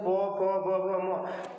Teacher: प वर्ग जब बोलते हैं तो प फ ब भ म तो हमारा ओष्ठ एक दूसरे से टकराता है, तो हम कहते हैं इसका उच्चारण स्थान ओष्ठ हो जाएगा